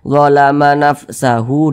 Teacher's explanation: Akan tetapi kalau kita tidak berhenti di sini, tidak berhenti di huruf H, kita sambung bacanya, kita wasolkan, tidak kita wakafkan, barulah huruf H ini dibaca panjang. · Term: mad silah qasirah